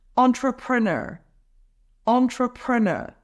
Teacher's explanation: emphasize the third syllable